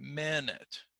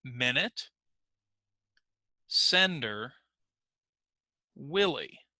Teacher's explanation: Okay, so if I click on the screen, you will see that the stressed syllable is the first one